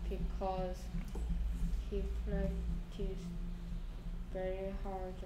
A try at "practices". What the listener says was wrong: Practice 하면 안 된다 그랬고요. Practices라고 발음 좀 합시다.